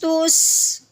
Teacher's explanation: سین جو حروف ہے نا سیٹی والے، اس میں سے ایک سین بھی ہے، اس لیے ہم نے اس کی سیٹی کی آواز نکالنی ہے